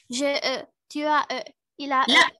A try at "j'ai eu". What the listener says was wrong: Là. On prononce pas comme ça. C'est U.